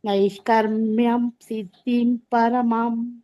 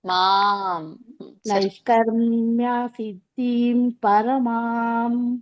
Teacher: ಪರಮಾಂ ಎಳಿಬೇಕು, ಮಾ ಎಳಿಬೇಕು.